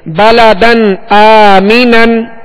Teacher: حمزہ حروف حلقی میں سے، لہذا یہاں پر اظہار کر کے پڑھیں گے، غنہ نہیں کریں گے